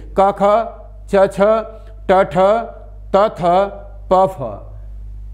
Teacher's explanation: ज्यादा जोर नहीं लगाना पड़ता इसलिए इनको आघोष कहा जाता है हमारे कंठ में इन में कंपन नहीं होता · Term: अघोष वर्ण